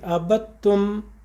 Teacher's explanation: اب جب میں نے آخر کا میم پڑھا ہے تو میم آلریڈی سائلنٹ، میں نے اپنا ہونٹ بند کر دی، عَبَدتُّم، وہ میم پوری ادا ہو گئی، کیونکہ میم کے نکلنے کا مخرج اور جہاں سے نکلتا ہے میم ہمارے دونوں ہونٹ ہیں جب ہم اسے بند کرتے ہیں